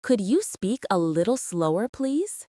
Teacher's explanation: It goes up slightly at the end to show it is a polite request. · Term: intonation